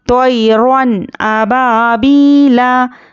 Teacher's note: नून की आवाज़ को ज़ाहिर करके बग़ैर गुन्ने के जल्द पढ़ना है। इसको इजहार कहते हैं।